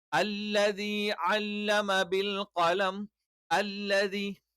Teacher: നാവിന്റെ അറ്റം അതിനെതിരെയുള്ള മുൻപല്ലുകളുടെ മോണയിൽ വെച്ചുകൊണ്ടാണ് ല എന്നുള്ള ഉച്ചാരണം.